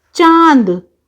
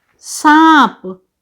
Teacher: तो चांद के ऊपर इस तरह से हमने चंद्र बिंदु लगाया क्योंकि उच्चारण करते समय अंग की ध्वनि जो है वह नाक और मुख दोनों से निकल रही है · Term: अनुनासिक